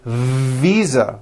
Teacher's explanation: I said fisa with an unvoiced F I should have said V Visa with a voiced V